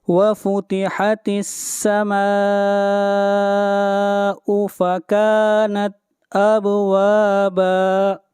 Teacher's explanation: اب با کے اوپر قلقلہ ہوگا، آواز کو ہلائیں گے